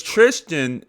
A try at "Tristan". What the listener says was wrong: Why are you having such a hard time saying his name? You said it like Trisket. Tristan. Tristan. You're saying Tristan.